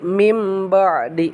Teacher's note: Jadi digantikan si nunnya ke mim. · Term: iklab